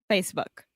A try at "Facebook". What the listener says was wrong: Excellent. Great job.